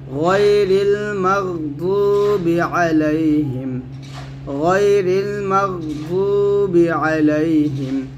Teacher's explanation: মাগ গয়না মোটা করতে হবে, এখানে গয়ন যেন কলকলা না হয়ে যায়।